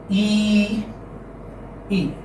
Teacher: E is a front close unrounded vowel. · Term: long E